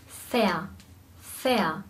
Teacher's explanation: Das bedeutet, am Ende sprechen wir ein vokalisiertes R aus.